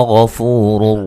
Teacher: غین کو موٹا ادا کریں گے